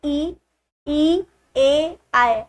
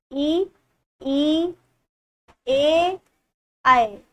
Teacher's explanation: ये सारे आपके मुख के आगे हिस्से से ही होंगे उच्चारण में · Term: अग्र स्वर